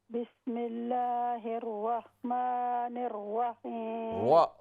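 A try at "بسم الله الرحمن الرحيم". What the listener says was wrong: वाव की आवाज ना हो। बिस्मिल्लाहिर रहमानिर रहीम।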